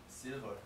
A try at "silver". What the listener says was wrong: Great. 훌륭합니다. Yes, leading. Very good. 발음도 역시 좋습니다.